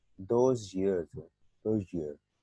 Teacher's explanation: इसमें जो य साउंड है और ज साउंड है ये आपस में सिमुलेट हो रहे हैं